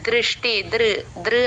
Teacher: ద కింద రుత్వం ఉంది ఉకారం రాకుండా ఇ కి ఉ కి మధ్యలో దృష్టి దృ దృ అని చెప్పాలి